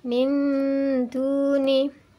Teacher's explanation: Cara membacanya masih ada suara nun yang dibaca dengan mendengung.